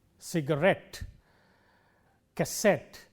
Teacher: In all these words, the stress is on the last syllable